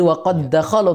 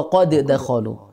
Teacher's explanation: maka jadi Qalqalah qad Oh qad kalau ketika sendiri ya namun ketika setelahnya ada huruf Dal maka tidak qalqala langsung masuk berlaku hukum idgham jadi waqad dakhalu tidak perlu waqad dakolu sering salah berarti Heeh